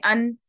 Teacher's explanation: नून का मखरज क्या है, जबान की नोक तरफुल लिसान कहाँ लगती है, ऊपर वाले दो दांतों के मसूड़ों पे। यहाँ पे टच हो गई, अन पढ़ के देखें, अन। · अब ये टच हो गई, मखरज तो बंद हो गया। मखरज बंद है, आवाज लेकिन यहाँ से आ रही है, आपके खशूम से गुन्ना निकल रहा है।